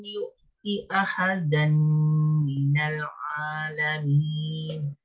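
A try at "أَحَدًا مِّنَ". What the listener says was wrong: Ahadam, masukkan terus mim. Ahadam.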